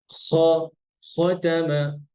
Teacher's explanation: খটা আর গইনটা আরেকটু ভিতরে আসেন, একদম গলার শেষ, হ্যাঁ, উপরে।